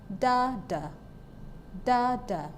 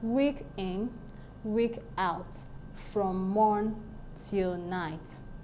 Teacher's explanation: stress syllable followed by an unstressed syllable I am is unstressed syllable followed by stress syllable Troy is